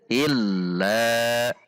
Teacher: lam tasydid dibaca dengan tidak panjang